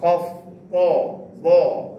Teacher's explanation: Isti'la ni dia meninggi baca dia, menyebut tu huruf tu pangkal lidah terangkat